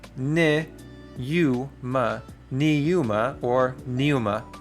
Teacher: these two vowels in a row do not create a diphthong. So it is ne, u, ma, neuma, or pneuma, which is spirit.